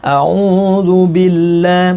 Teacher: Karena lafaz Allah di sini didahului harokat kasrah. Jadi bacaannya tarkik agak tipis, jangan dibaca terlalu tebal. Tafkhimnya juga jangan terlalu tebal.